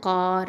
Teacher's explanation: காஃப் அப்படிங்கிறது அக்கசல் லிசான் கீழ் நாவை எழுத்து, அடிநாவை எழுத்து.